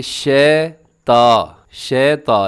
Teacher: فَأَزَلَّهُمَا الشَّيْطَانُ، اور الشیطان جو لکھا ہو اس میں آپ نے ایک تو شین زبر یا شی اور طا کھڑا زبر طا، شیطا، اسے کیا پڑھا جاتا ہے کہ شیطا، شیطا، یعنی دو غلطی ہو جاتی ہیں۔ ایک تو یا لین کو مجھول کر دیا جاتا ہے اور طا کو باریک